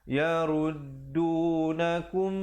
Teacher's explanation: Yaruddunakum, didengungkan di situ 2 harakat. Mim mati bertemu mim.